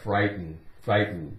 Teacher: we don't really make much of a sound with that T it's more like frighten frighten T is pretty much silent too